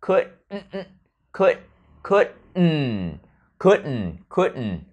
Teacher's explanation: nó có một cái glottal stop nè, một cái nghẹn ở cổ, xong rồi bật hơi sang đường mũi tạo thành âm nasal. Could, nghẹn ở cổ nè.